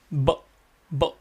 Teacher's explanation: the b sound is touching our two lips together. We are touching our two lips together and trying to actually make the sound.